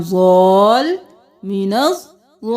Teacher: مینز، ضاد زبر الف مد لام ضال، مینز ضال. لام 2 بار ادا ہوگا، اس لیے لام پہ تھوڑی دیر لگی. ضال لین تو نہیں کر سکتے، اس لیے کریں گے ضال، 2 بار ادا کرنا ہے، اس لیے من الضالین.